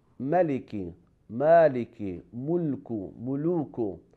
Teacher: pronunciation of letter Lam in any word except the word of Allah subhanahu wa ta'ala, it has the quality of lowering. The root of our tongue goes down.